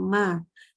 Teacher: Pangkal lidahnya turun dan dia kalau yang istifal pasti infitah, lidah dengan langit-langit mulut terbuka. · Huruf mim juga huruf yang tipis ya, berarti dia itu pangkal lidah turun, nggak boleh baca mim dengan pangkal lidah yang naik